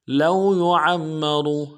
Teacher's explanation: یعمر میں عین کو موٹا کریں گے